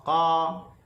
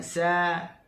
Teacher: Contoh kita sebut huruf qaf, qa. Okey, dia akan jadi taghliz juga, dia akan jadi tebal. Begitu juga kalau kita bincang berkaitan dengan istifal. Contohnya sa, dia akan jadi nipis.